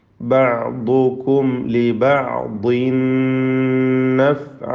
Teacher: ലിബഅ്ദിൻ എന്ന തൻവീനിനെ പൂർണ്ണമായും ശേഷമുള്ള നൂനിൽ ലയിപ്പിച്ച് മണിക്കണം. ഇദ്ഗാം ബിഗുന്ന.